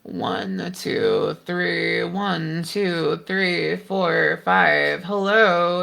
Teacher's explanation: you can hear that like more creaky fry quality starting to manifest in the sound, and it immediately deleted that breathiness.